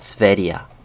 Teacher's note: And in Swedish these G sounds kind of take a Y, English Y sound.